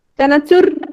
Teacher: জীবের মাথাটা যেহেতু কাঁপছে তাহলে কিসের কারণে কাঁপছে র এর কারণে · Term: কম্পন জাত ধ্বনি